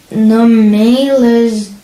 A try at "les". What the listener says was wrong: So here, les, not les. no S sound, okay?